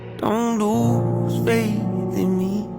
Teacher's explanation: So the word faith, we have TH in it, and that is the unvoiced TH